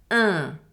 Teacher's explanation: For the nasal sound un, my lips are stretched, my mouth is almost closed, kinda like in a joker smile, and my tongue is forward and it is touching my lower teeth.